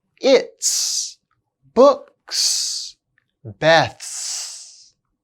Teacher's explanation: when the contraction follows t, p, k, f, or th, it's pronounced s.